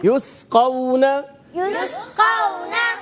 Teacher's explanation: اور بعض بچے یا بڑے قلقلہ کر دیتے, پڑھتے ہیں یسقون, تو ہلانا بھی نہیں, قلقلہ بھی نہیں کرنا, اور اس کو ساکن رکھنا ہے سیٹی کے ساتھ. قاف حروف مستعلیہ میں سے, موٹے حروف میں سے, اس کو ہم نے موٹا کر کے ادا کرنا ہے. · سین کو سیٹی کے ساتھ ادا کرتے ہیں, باریک رہے گا, پر نہیں ہونا چاہیے.